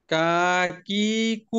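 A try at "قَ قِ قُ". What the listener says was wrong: কা তো মাদ হয়ে গেল, কাকিকু। আচ্ছা, এখানে কোনটা কোনটা সিমিলার বলেন তো, জেরের ক্ষেত্রে সিমিলার কোনটা কোনটা, কি এবং কি। যদি আপনি কপটাকে সুন্দরভাবে উচ্চারণ না করতে পারেন তাহলে এটা কি এর মতনই হয়ে যাবে, ঠিক না? এই জন্য এখানে খুবই সাবধান।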